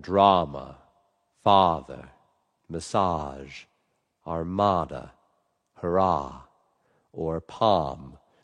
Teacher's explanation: it's a big open a. Your tongue is down, your lips are relaxed, and it's relaxed and free.